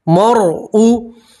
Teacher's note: را سکین سے پہلے زبر ہے را کو آپ موٹا پڑھیں گے پور پڑھیں گے ٹھیک ہے مرعو ما قدمت میم کے ساتھ